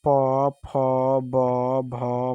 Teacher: पवर्ग को क्या बोलते हैं हम लोग, ओष्ठ बोलते हैं ना।